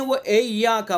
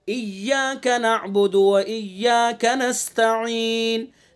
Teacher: तो मजहूल बिल्कुल नहीं होने देना है, हमें मारूफ पढ़ना है